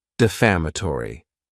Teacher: this word has 5 syllables, and the stress is on that second syllable.